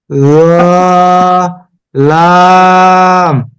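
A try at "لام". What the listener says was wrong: না, এটা নরম হয়ে যাচ্ছে। একটু স্বাভাবিক ভাবে বলি। লাম। জি, আমরা যে জিহ্বা যদি উপরে দাঁতের সাথে লাগাই তাহলে নরম হবে, কিন্তু এটা নরম হবে না, লাম স্বাভাবিক হবে।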